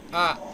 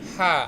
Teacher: Nah, tapi kalau yang tidak tertahan hurufnya H. H itu tidak tertahan udaranya